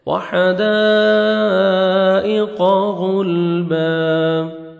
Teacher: جب سٹاپ کریں گے با زبر الف ہو جائے گا, 1 سیکنڈ آپ نے با کو کھینچنا ہے